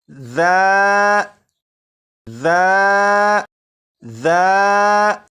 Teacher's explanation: زبان کی نوک اوپر کے سامنے کے 2 دانتوں کے سرے سے لگا کر پڑھیں تو سی ٹی کی آواز ختم ہو جائے گی۔